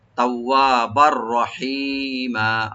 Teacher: তাওয়া বার রহিমা, বার উপরে যে তানবিন আছে, এটা তানবিনের পরে যেহেতু রা আসছে, এখানে আমরা ইদগাম করব, কিন্তু গুন্না ছাড়া, উইদাউট গুন্না। তাওয়াবার রহিমা, র ওপেন রাখবেন, হি একালে টানবেন।